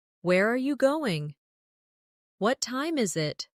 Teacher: for information questions, those starting with who, what, when, where, why, how, the tone often falls at the end. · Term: falling tone